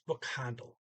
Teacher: I think I put an IL for the end of that, but it's really, they're just saying the L, and what vowel you hear before it is like a slurred vowel.